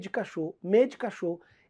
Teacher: esse D quase não é pronunciado você até come essa vogal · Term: falta de tonicidade